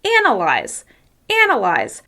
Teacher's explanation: As you can hear, I'm making that first syllable longer, louder, and higher in pitch. · the word analyze is stressed on the first syllable